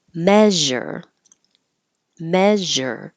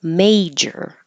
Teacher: you need the vowel a as in hey and you need to stop the air flow for the J